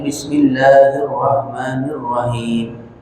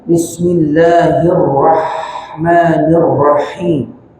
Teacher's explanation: Rahman, bismillahirrahmanirrahim, ra bertasydid, maka ada sifat takrir pada huruf ra, getarkan, gitu, hirrah. Kemudian ha di sini ha kecil. Di sini ha kecil, tenggorokan bagian tengah. Orang kita bacanya, kalau baca bismillah itu dengan hak besar.